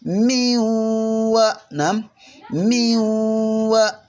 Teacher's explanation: ddoboozi erifulumira mu bituli by'ennyindo ebibiri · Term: okuwuna